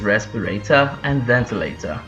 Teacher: Now the reason we have the R's in the brackets is actually because under the British English there are several accents, and some actually still roll the R's, but the Southern England accent and the received pronunciation is not rhotic, so you don't roll your R's